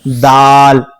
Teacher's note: जबान की नोक ऊपर के दांतों की जड़ में जाकर टच होती है।